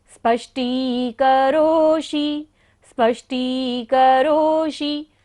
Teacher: करोषि में भी मूर्धन्य शा है, तो हमें बोलते हुए ध्यान रखना है कि उच्चारण हमारी मूर्धा से हो · नास्तं कदाचिदुपयासि न राहुगम्यः। स्पष्टी, स्पष्टी में दंती सा भी है, स स्पष्टी, और मूर्धन्य शा भी है।